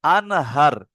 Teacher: বিনা গুন্নায় জাহির করে পড়তে হবে জাহির বলতে কি প্রকাশ করা একেবারে কি মানে আওয়াজটা বার করে দেওয়া যেমন ধরেন আপনি পড়ছেন আনহার কি পড়ছেন?